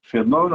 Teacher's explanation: Fenômeno é uma proparoxítona. A antepenúltima sílaba é a mais forte.